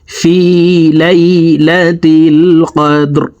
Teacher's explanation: কফ দাল জবর কদে, র জের রি, কদে রি, রকে ওয়াকফের ক্ষেত্রে সাকিন করে ফেলবো। এখানে দাল কলকলার হরফ নিচের দিকে ধাবিত করে ধাক্কা দিয়ে উচ্চারণ করতে হবে।